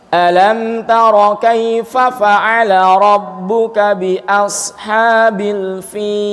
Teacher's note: Kalau saya membaca mad arid disukunnya itu 6 harokat, mad linnya boleh 6 harokat, boleh 4 harokat, boleh 2 harokat.